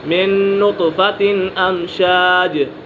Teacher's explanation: یہاں پر نون ساکن کے بعد نون ہے تو یہاں غنہ کر کے پڑھیں گے۔